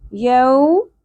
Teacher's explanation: یو واو ساکن سے پہلے زبر، حرف لین نرمی سے پڑھیں گے، یو نہیں پڑھنا، یوم میم کے اوپر زبر ہے، ایک حرکت کے برابر ہی کھینچیں گے، زیادہ نہیں کھینچنا.